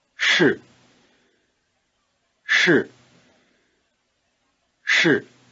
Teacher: pronounced with the tip of the tongue curled back in what we call the retroflex position